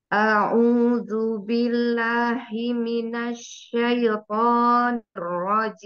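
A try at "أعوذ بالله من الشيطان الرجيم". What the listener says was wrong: Afwan, ulangi di huruf shinnya ya.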